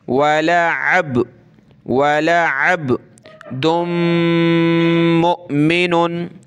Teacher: कलकला करेंगे, यानी इस तरह पढ़ें कि ये बा जो है हमारे मुंह के अंदर घूमे